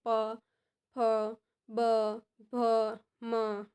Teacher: ઓષ્ઠ્ય એટલે કે બંને હોઠે ભેગા થઈ જાય